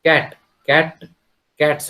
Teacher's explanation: So cat, in cat, the word ends with, or the morpheme ends with t sound. T is a voiceless sound. Therefore, when you attach s morpheme to it, that s morpheme is pronounced as s.